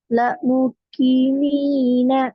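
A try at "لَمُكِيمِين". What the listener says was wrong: இல்ல நீட்ட வேண்டியது நீட்ட இல்ல.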